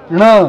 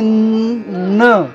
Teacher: बाणाचा उच्चार करत असताना जीभ पाठीमागून पुढे वरती टाळूला टेकलेली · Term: बाणाचा ण